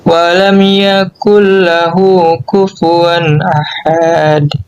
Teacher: idgham bila gunnah, yaitu tanpa dengung